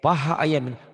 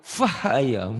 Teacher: Orang Sunda mah P itu jadi F gitu kan